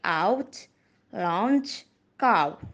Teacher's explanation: it is a back open rounded glide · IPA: /aʊ/